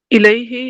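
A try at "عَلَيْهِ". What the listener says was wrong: अलैही, अलैही आइन पर ज़बर है, अलैही।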